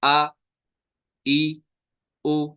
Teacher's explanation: हमजा होता है अदा हलक के नीचे वाले हिस्से से, the bottom of the throat